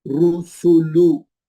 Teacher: पहले रा को भी होंठ गोल, सीन को भी होंठ गोल, लाम को भी होंठ गोल, और खींचेंगे किसी को नहीं, जल्दी जल्दी पढ़ेंगे।